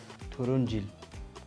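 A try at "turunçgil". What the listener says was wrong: Turuncgil. Do you not see the G there? Turuncgil.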